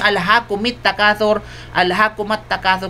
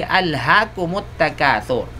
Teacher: nagkakaroon ng patinig, dhamma, ang mim sakina, dahil sa ito ay dumating bago ang hamza al-wasl